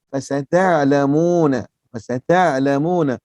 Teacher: Bunyi di mana? Di tengah halqum. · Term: ain